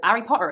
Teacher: hes are dropped from the beginning of words